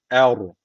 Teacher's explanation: Er bakın ra harfi cezimli. Öncesindeki harf e üstten bağlandığı için ra harfi kalın okunacak.